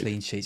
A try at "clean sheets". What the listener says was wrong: accentuate the wrong part of the word. Like you say clean sheets. That's weird.